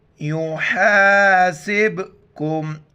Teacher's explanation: کلکلہ یعنی آواز کا پوری منہ میں راؤنڈ کرنا، جھٹکے کے ساتھ پڑھنا